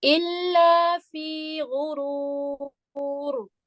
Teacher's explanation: इल्ला लाम को मोटा नहीं करेंगे